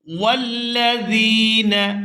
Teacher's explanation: زال کو یا ساکن کے ساتھ ملاتے ہوئے کھینچ کر ادا کریں گے